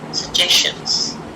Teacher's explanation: Again here, 2 G's, I'm only pronouncing one, suggestions. The shan always becomes a schwa sound